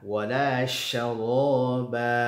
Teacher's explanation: Shinnya ada suara berhamburan atau tafasyi dari mulut ketika mengucapkan bunyi huruf shin